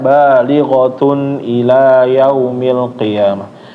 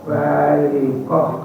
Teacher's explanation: kalau nyambung jadi huruf Ta kalau misalnya berhenti jadi huruf ha